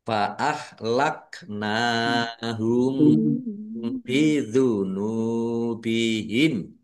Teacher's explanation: mim sukun bertemu dengan huruf ba namanya ikhfa syafawi dibaca samar-samar. Jadi jangan dibaca jelas.